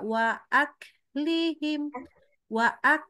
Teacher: kafnya dulu kafnya harus keluar udara